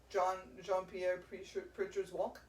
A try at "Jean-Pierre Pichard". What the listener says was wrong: Pichard. No R in it.